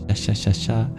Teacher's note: that S with the accent above it is just the same as the SH sound in English, palatal sibilant.